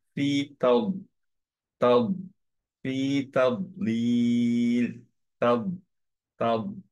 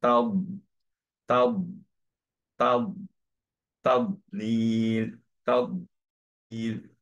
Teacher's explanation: এগুলো heavy letter, so obviously back of the tongue elevated হবে।